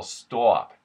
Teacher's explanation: the short oh and the aw become an aw